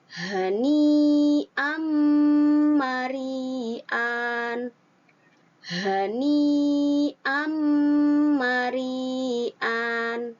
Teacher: fathatain bertemu dengan mim, itu tanwinnya langsung dimasukkan ke dalam mim